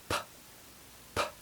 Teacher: The only difference is that one's voiced and the other's unvoiced. To produce the p sound, press your lips together, build up the air behind and suddenly release it. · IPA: /p/